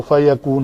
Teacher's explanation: فَإِنَّمَا يَقُولُ لَهُ كُن فَيَكُونُ، یہ ہا کے اوپر بھی الٹی پیش ہے، ہا الٹی پیش ہو، کن فَيَكُونُ، فَيَكُونُ تھا تو اس کو نون کو ساکن کریں گے تو فَيَكُون ہو جائے گا